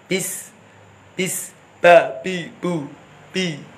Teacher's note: Kalau digeget ini meleset. Jadi makhrajnya ba itu syafatain bagian dalam, bibir bagian dalam. Bi, mingkemnya biasa saja.